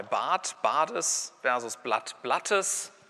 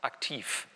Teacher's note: Am Ende von Silben verlieren Obstruenten, also Frikative und Plosive, ihre Stimmhaftigkeit. Das heißt, hier in der Position geht der Unterschied zwischen G und K, jetzt ganz blöd gesagt, geht verloren.